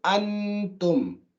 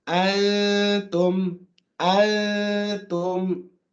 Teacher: You can still hear the make out that there is a noon there. And the noon is dominating over the ta. Even though the ta is there, is faint. So the first letter dominates, it's called an ikhfa. · you can still hear the noon, even though it's not distinct. You can still hear the make out that there is a noon there.